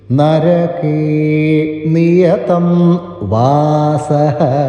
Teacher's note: ഇവിടെ ന എന്നത് ദന്ത്യമായിട്ടുള്ള ന ആണ്